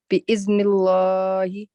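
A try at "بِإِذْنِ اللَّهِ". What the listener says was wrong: So don't do full mouth here. Remember, it's got kasra just before it. Okay, so it'll be bi'idhnillahi.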